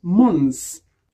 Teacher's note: lorsque month est au pluriel, le TH disparaît et c'est prononcé months